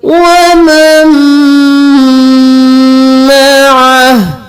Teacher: یہاں پر ہم نون کو چھوڑ کر میم کو میم کے ساتھ ملائیں گے اور میم پر غنہ بھی کریں گے. وَمَن مَعَهُ یہاں پر وقف ہو جائے گا تو ہاں ساکن ہو جائے گا.